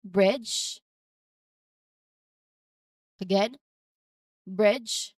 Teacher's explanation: There's a J sound in there at the end. So you don't hear a separate D sound before the J sound